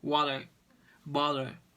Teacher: They say them with a voiced sound, like a quick d. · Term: flap T